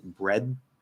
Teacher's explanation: it's a weird combination between like a dental d and a th · Instead of like pulling off a dental D, like the, we'll actually, as we release it, we'll actually let the air flow around it, sort of like a TH sound instead of it. So we'll do the dental D plus sort of this like weird TH sound, bread. So we're just as we pull off, we're just pushing the air through instead of trying to say the.